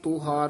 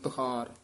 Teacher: ਤੁਹਾਰ ਔਂਕੜ ਨਾਲ ਉਚਾਰਨ ਕਰਨਾ ਤੂਹਾਰ ਨਹੀਂ ਬੋਲਣਾ ਛੇਤੀ ਬੋਲਣਾ